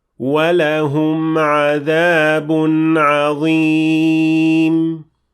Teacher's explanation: So for example, if we apply اختلاس on the waw here in this ayah, which you shouldn't, it would mean that the waw will have a short vowel that is shorter than the rest.